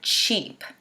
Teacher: The E sound, it's longer than a lot of the vowel sounds.